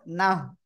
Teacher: কি আছে আছে দেখেন এই জায়গায় আছে জাস্ট গোলতা সহ তাহলে গোলতাটা কি হয়ে যাবে এরকম হা হয়ে যাবে এবং সাকিন হবে